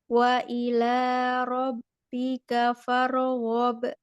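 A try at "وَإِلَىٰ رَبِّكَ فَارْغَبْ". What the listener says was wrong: Iya, jangan fare, tapi far.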